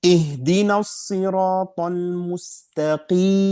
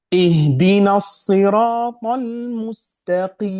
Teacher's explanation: Seharusnya tidak ada gunna, Bapak dan Ibu. Hanya gunna dalam huruf mim dan nun. Huruf ya tidak ada gunna.